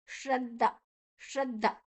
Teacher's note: ದ ಮತ್ತೆ ದ ಎರಡೂ ಕೂಡ ಅಲ್ಪ ಪ್ರಾಣ, ಮಹಾಪ್ರಾಣ ಇಲ್ಲ. ಶ್ರದ್ಧಾ ಅಲ್ಲ, ಶ್ರದ್ಧ ಶ್ರದ್ಧ.